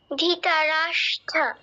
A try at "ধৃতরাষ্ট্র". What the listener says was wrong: না, ধি নয়, ধৃ বলো, ধৃতরাষ্ট্র। হ্যাঁ, কিছুটা হয়েছে, একটু ভুল আছে। দেখো, স ট র, স ট র যুক্ত হয়েছে, তাহলে কি হবে? স্ট্র, স্ট্র, ধৃতরাষ্ট্র বলো।